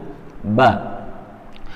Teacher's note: Ba ini tempat keluar hurufnya yaitu dari 2 bibir yang menempel. Kemudian dihentakkan sedikit ya.